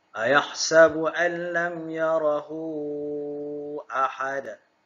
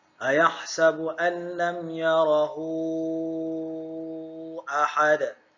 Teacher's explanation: Dibaca panjang qadar 4 atau 5 harakat. Bermaksud pelajar-pelajar boleh memilih kadar panjang bagi bacaan maksilah tawilah, sama ada membaca 4 harakat atau 5 harakat.